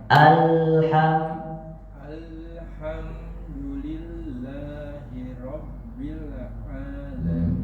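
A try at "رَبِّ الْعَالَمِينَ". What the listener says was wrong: Tinggal PR-nya bil. Rabbil alamin. Rabbil tahan lagi sama kayak masih kedengaran sedikit pantulannya. Alnya sudah bagus, tinggal bilnya. Rabbil alamin. Rabbil alamin. Rabbil tahan lagi.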